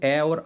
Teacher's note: अ और आ जो है कंठ से बोले जाते हैं फिर उसके बाद